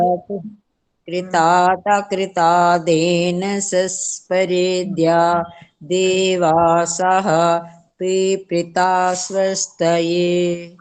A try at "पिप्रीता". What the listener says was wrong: या लंबा नहीं, देखो मुश्किल को ठीक बोल दिया, पीप्रीता बोल दिया, पिप्रीता, हाँ पिप्रीता, पी पित्रा नहीं, छोटी की मात्रा ना, पिप्रीता, जल्दी से बोला, पिप्रीता।